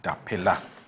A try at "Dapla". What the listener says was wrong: It's not Dapela, Dapla?